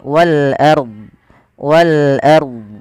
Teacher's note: ro tafkhim yaitu r-nya dibaca dengan tebal